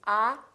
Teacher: don't say ah and don't say eh it's kind of between those two it's ah with a smile